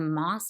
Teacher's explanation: with that lower vowel and that sibilant sound, the S sound, and with the nasal, the M sound